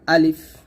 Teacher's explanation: আলিফ আমরা তাড়াতাড়ি পড়বো, আলিফ টান হবে না